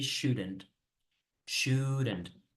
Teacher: So in English you say should, hay que como que poner una pequeña vocal entre la D y la N. Like, it's a schwa sound, but it sounds kind of like an E.